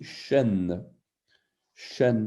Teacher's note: On a le shin yémanite avec le point à droite, en haut à droite, pour bien montrer que c'est un ch. On dit que c'est une consonne fricative post-alvéolaire sourde